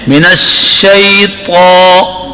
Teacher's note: اب طا کو زبان کا درمیان اوپر کے تالو سے چمٹ کر پڑھیں